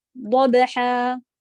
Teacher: با پہ قلقلہ، ہا حلق کے بیچ سے